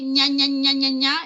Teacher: En chuño, la ñ, ña, es palatal.